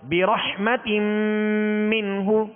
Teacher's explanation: یعنی یہ تنوین جو ہے میم میں داخل ہو گئی. یہ تنوین نون ساکن ہی ہوتا ہے، لہذا یہ میم میں داخل ہو گئی. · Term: ادغام